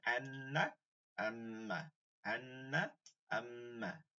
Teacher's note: হরকতের বামে নুন মিমমে তাজদিদ থাকলে এটা গুন্না করে পড়তে হবে এটাকে ওয়াজিব গুন্না বলে